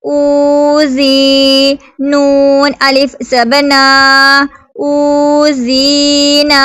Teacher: واو ساکن سے پہلے پیش ہے تو واو مدہ ہوگا، ایک الف 2 حرکات کے برابر کھینچ کر پڑھیں گے اس کو